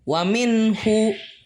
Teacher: Nah, di sini tuh ada ishar halki, yaitu huruf nun mati bertemu dengan huruf ha yang dibaca jelas